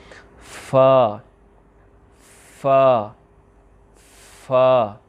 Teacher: پھر آپ نے پڑھنا ہے فا ثنایا علیہ کے کنارے اور نچلے ہونٹ کا تر حصہ. اب فا پڑھتے ہوئے بھی اس میں ہلکی سی ہوا جو ہے اس کا ساؤنڈ آپ کو محسوس ہوگا اور یہ جو فا یہ جو ہوا اس میں محسوس ہوتی ہے نکلتی ہوئی یہ آپ کی بھی اس میں جاری ہونی چاہیے کہ آپ کو پتہ چلے کہ یہ حرف ہے جو اس کا سارے اوصاف اس میں موجود ہوں.